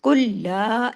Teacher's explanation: لا کو باریک رکھنا ہے اور اس کا مد کا بھی حق ادا کرنا ہے · قل لا، کاف ہیوی، لام کو تشدید کے ساتھ ہے، سختی سے جوڑنا ہے ، قل لا، لا کو باریک رکھنا ہے اور اس کا